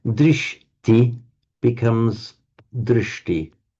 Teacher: where within a word you have a sh followed by a t, they automatically become retroflex